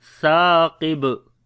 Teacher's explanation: Qaf we read in heavy sound. On the ba we make qalqala, this is strong qalqala.